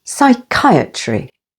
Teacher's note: Psychiatry with the stress on the second syllable